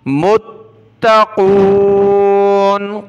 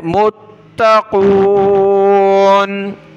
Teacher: کو سخت کیا، میم کو تا کے ساتھ ملا کر متقون، قاف کو موٹا پڑھنا ہے